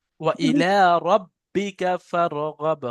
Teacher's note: হ্যাঁ, তবে বার উপরে যখন তাসদিদ এসছে, তাহলে বাটা রর সাথে যখন মিলে উচ্চারণ হবে তখন সাকিন হয়ে হবে, র বা যাবার রব। তাহলে সাকিন হওয়ার কারণে ওই বাটাকে কলকলা করতে হবে। ওয়া ইলা রাব্বিকা ফারগাব।